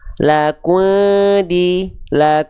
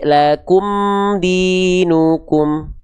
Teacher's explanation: maka jelas mim sukunnya dari bibir izharkan mim sukun dari syafawi lakumu lakum di Jangan dibaca samar lak lak enggak tapi lakum